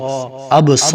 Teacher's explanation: وعلا حمزہ زبر با اب صا زبر الف صا اب صا، اسے 1 الف کے برابر کھینچیں گے کیونکہ الف مدہ ہے